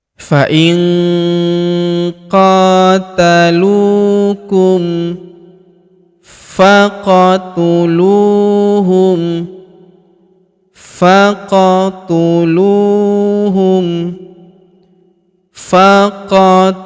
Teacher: huruf fa langsung sambung masuk ke huruf qaf yang berharokat sukun, langsung masuk ke sini kita pantulkan atau kita qalqalahkan · alifnya tidak dibaca ini hamzah wasal hamzah penyambung antara kata sebelumnya dan kata setelahnya